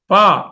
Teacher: ప అనేసరికల్లా పెదవులు దగ్గరకు వస్తున్నాయి